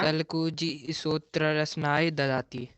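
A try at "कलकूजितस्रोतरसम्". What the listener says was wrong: एक साथ है, कल कूजित स्रोत रस, रचनाएं तो होगा ही नहीं, फिर गलत पढ़ रहे हो। कल कूजित के में ऐकार की मात्रा है कि नहीं है, सो बोलो।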